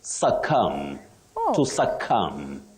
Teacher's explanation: the B at the end of that word is silent